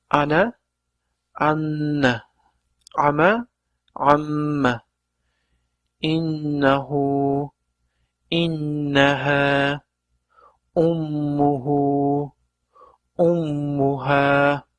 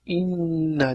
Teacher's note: nun hamda mim harflari tashdid bilan kelganida g'unna qilinadi hamda biroz ya'ni bir harakat miqdorida ushlab turib o'qiladi